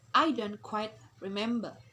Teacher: In re, we have fall, and member, we have rising.